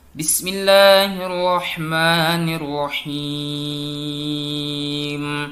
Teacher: mad arid lisukun ini adalah bacaan panjang yang letaknya di akhir ayat